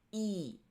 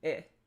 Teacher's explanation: e is a tense vowel and a lax vowel that you could compare it to would be I. So you can feel that e i.